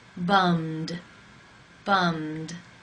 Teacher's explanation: The final sound in the infinitive is the M consonant sound. It is voiced. Therefore, it is case 2, and the ED is pronounced as the D.